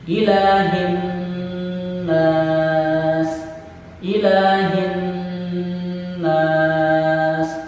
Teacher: Ada Nun bertasydid, sekali lagi hukum bacaannya adalah gunnah, dibaca dengung. Adapun lama dengungnya adalah minimal 2 ketukan.